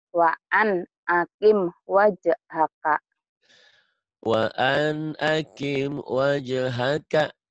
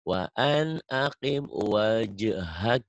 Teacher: Kapnya jadi mati jadi hamas